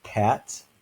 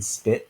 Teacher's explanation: we have pat versus the P in spit that's not aspirated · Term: aspiration